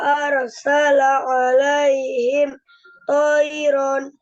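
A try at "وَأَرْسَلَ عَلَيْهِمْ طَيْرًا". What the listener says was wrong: Wa arsala alaihim tayron. Ardun wa arsala alaihim tayra. Kalau dia dibacanya toiro tanpa ron ya, kalau dipanjangkan itu jadinya mat iwat ya, dipanjangkan 2 harokat, enggak toiron, bukan begitu. Kalau mau toiron langsung. Tapi kalau dia dipanjangkan jadi mat iwat, toiro, nah, dipanjangkan ro gitu. Jangan sampai toiron, itu salah ya.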